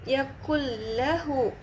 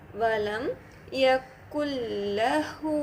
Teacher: ஆனால் வந்து இது பிகைர் குன்னா. இந்த இடத்துல நம்ம குன்னா செய்யாமல் மர்ஜிங் மட்டும் பண்ணி படிப்போம்.